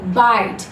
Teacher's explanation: I और Y वाल जो हमारे होते हैं उनका भी साउंड डिफ्थोंग के केस में होता है आई, ना कि ई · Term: diphthong